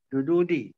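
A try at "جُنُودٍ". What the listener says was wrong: Din. Sebab dia tak ada al. Yudu din ya. Jududin.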